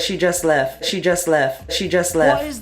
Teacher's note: in a word like West you might hear it pronounced as Wes